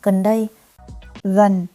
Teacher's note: Slow, gần, đây, natural, gần đây, gần, has a falling, rising tone, it dips, then comes back. đây, It is level, here, settled.